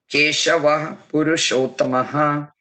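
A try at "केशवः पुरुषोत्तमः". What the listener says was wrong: Keshavah Purushottamah. Yeah, we won't break them as two different namas. We'll just add an extra emphatic H after Keshava, and it'll be Keshavah Purushottamah.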